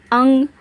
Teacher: लिखा है अंग इसका जो स्लीपिंग लाइन के ऊपर डॉट है इसे अनुस्वार कहते हैं इसका उच्चारण नाक से होता है